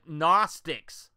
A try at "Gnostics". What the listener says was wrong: Gnostic, G is silent.